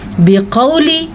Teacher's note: عام طور پہ لوگ اس کو پڑھتے ہوئے ہوا پڑھ لیتے ہیں تو یہ غلط ہے. بقولی قاف زبر و قو یہ واو لین ہے اور موٹا قاف ہے. موٹا قاف اس لیے اس کو کہتے ہیں کیونکہ یہ حروف مستعلیہ میں شامل ہیں.